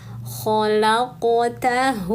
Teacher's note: Qafnya sukun maka kolkolahkan. Qaf itu pangkal lidah naik menempel ke langit-langit mulut, lalu lepaskan.